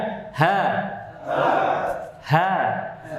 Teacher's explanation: bagian bawah stopsol halqi yaitu huruf H pastikan ha ha ingat hanya sampai di tenggorokan bawah saja